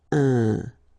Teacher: keep in mind that it goes in your nose, so you don't hear any N when I pronounce it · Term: nasal